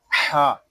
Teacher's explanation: یہاں ہا جو ہے یہ حلق کے درمیان والے حصے سے ادا ہوگا، اس کو ہا اس طرح نہیں پڑھیں گے، اس کو پڑھیں گے ہا۔